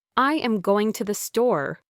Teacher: With equal stress on every word.